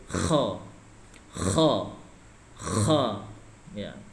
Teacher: makhrajnya kerongkongan paling luar, kerongkongan paling luar